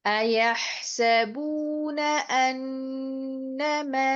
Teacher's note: أَيَحْسَبُونَ میں نون کی زبر کو آپ جلدی ادا کریں گے